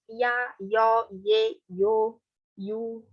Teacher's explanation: vogais iotizadas, que são ditongos que começam com i